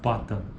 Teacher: O que ele é? Uma oclusiva bilabial desvozeada